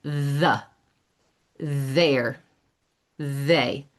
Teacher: So my tongue is coming between my teeth when I produce that sound. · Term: Voiced th